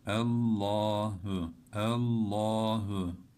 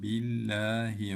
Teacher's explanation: E bağlarken hemen kalın bağlıyoruz. Allah lafzından önceki harfin harekesi üstün veya ötre olursa bu lamı kalın okuyoruz ve kalın bağlıyoruz